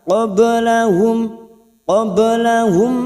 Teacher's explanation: Qablahum, qablahum, mim sukun bertemu mim idgham mimi, masuk pada huruf mim berikutnya dan mendengung selama 3 harakat